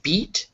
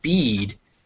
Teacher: you'll notice that beat is very short but bead is much longer